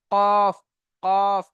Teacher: দেখেন জিভের গড়াটা উপরে তালুর সাথে অটোমেটিক লেগেই যাচ্ছে, কফ, কফ। লাগছে না জি, জিভের গড়াটা উপরে তালুর সাথে লেগে যাচ্ছে, কফ।